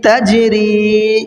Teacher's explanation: تاجیم زبر تج، رایا سے ری، تجری، جیم میں قلقلہ ہوگا اور یا مدہ کو کھینچ کر کے پڑھنا ہے